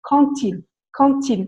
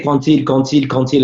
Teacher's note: We were saying a D at the end, and our teacher went, no, les filles, it's quand-il with a T.